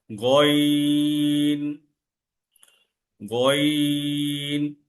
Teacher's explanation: আমি যখন গন উচ্চারণ করছি আমার গলা কিন্তু কর্কস কর্কস ভাব আসতেছে উচ্চারণটা গ কিন্তু এখানে কিন্তু হালকা কর্কস কর্কস ভাব থাকবে এবং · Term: গইন